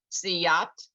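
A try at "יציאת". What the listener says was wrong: Now you need that yud, and not ya. the sound of the yud. So it's yeah.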